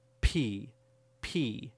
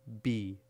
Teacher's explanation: But with P, there is much more air pressure built up.